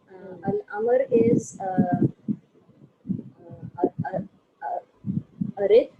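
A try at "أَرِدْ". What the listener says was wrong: Yes, Arid, very good.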